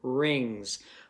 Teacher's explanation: It's still suffix S even though it makes a Z sound in this word, rings.